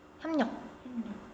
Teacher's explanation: 기역, 디귿, 비읍이 뒤에 비음을 만나 가지고 이게 비음으로 바뀌는 현상. 그리고 두 번째는 리을이 비음을 만나 가지고이 리을이 비음으로 바뀌는 현상이 두 가지가 있어요. · 리을이 니은으로 바뀌어야지 되겠죠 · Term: 비음화